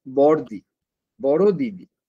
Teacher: একটা দি বাদ দিয়ে দিচ্ছি, আমি বলছি বড়দি বা বড় দি। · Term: ব্যঞ্জন চ্যুতি